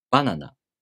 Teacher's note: The first mora starts high in pitch. So, the next mora must be low in pitch. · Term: pitch accent